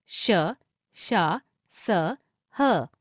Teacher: इनका उच्चारण करते समय हवा मुंह में अत्यधिक रगड़ खाने के कारण थोड़ी ऊष्म गर्म हो जाती है, इसलिए इन्हें ऊष्म व्यंजन कहते हैं।